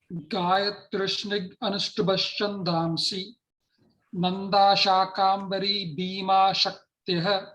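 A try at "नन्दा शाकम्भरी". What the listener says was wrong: Shakam, just Nanda Shakambhari. I think you said R extra, I heard it. Nanda Shakambhari.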